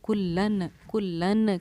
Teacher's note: کلن کے لاسٹ میں جو نون کی آواز آ رہی ہے وہ میم میں چینج ہو جائے گی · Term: اقلاب کا قاعدہ